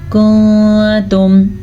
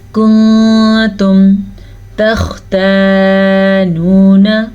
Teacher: نون ساکن کے بعد تا حرف اخفا میں سے ہے تو ہم یہاں پہ اخفا کریں گے چھپے ہوئے غنے کے ساتھ